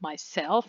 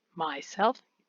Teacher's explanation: the stress is always on the second syllable